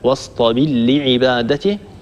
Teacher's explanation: قرأ الدوري بخلفه عن أبي عمرو بإدغام الراء في اللام هكذا: واصطبر لعبادته.